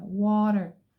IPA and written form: wɒtər (water)